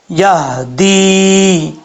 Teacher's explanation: یا کے بعد جو ہا ہے یہ ہا بھاری ساؤنڈ کے ساتھ پڑھا جائے گا۔ اکثر لوگ غلطی کرتے ہیں، اس کو پڑھتے ہیں یہدی، یہدی نہیں پڑھنا، یہ ہا جو ہے وہ بھاری ساؤنڈ والی ہے، یہدی۔